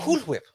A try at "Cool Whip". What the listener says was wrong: Why are you putting so much emphasis on the W?